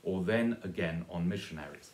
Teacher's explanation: they both have an extra unstressed syllable on the end of the line